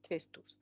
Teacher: And also in small print, right, I also say that colloquially in masculine plural nominals like test in the singular, in the plural, we also can get this U, testus, which avoids a concurrence of two S's in a coda